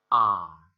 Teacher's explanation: The sound of this symbol is A. This is similar to Bengali A, but it is longer than the other three A sounds.